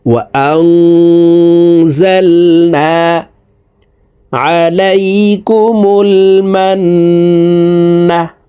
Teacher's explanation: নুন সাকিনের পরে ইকফার হরফ যা আসছে, এই কারণে এই নুন সাকিনকে নাকের ভিতরে লুকাইয়া গুন্নার সহিত পড়তে হবে। দেখুন এইভাবে পড়ব, وأنزلنا عليكم المنة। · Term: ইকফা গুন্না